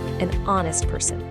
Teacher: the word honest starts with an H, which is a consonant letter, but the H is totally silent. The first sound you actually hear is O, an honest person.